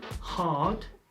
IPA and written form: hɑːd (Hard)